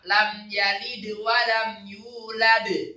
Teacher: Lam yalid nggak sekuat yulad karena lagi wasol dia. Lagi berhenti, belum ngerem. · Secara otomatis yalid yang pertama tidak sekuat yulad. Kenapa? Dia sudah ending yulad. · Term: qalqalah